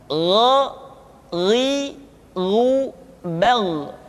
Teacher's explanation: Diucapkan seperti kita mengucapkan huruf Kha, yaitu diucapkan dari pangkal tenggorokan kita. Yang membedakannya adalah Kha mengalir nafas dan Gha tidak mengalir nafas. Dan keduanya memiliki persamaan, yaitu memiliki sifat al-isti'la. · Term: huruf Gha